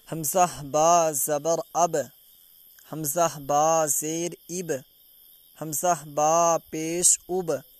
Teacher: تو اب دیکھیں با کے اوپر جزم ہے اور جب ہم با کو پڑھ رہے ہیں تو اس کی آواز واپس آ رہی ہے، ٹکر کھا کے واپس آ رہی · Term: قلقلہ